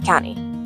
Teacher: Word county is not pronounced by the sounds itself, it's blended together and pronounced as one syllable